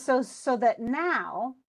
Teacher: So that now we have unstressed, unstressed, stressed. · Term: anapest